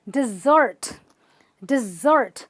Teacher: Dessert, where you stress the ert.